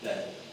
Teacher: It's spelt bell, B-E-L-L, but it's often pronounced bell, with the L sound almost completely dropped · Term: dropped L